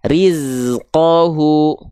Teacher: desisan untuk huruf zai itu seperti sengatan lebah. Nah, karakternya tajam. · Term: sofir